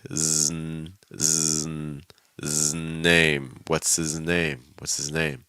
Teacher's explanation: So that Z sound is going to link into an N. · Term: linking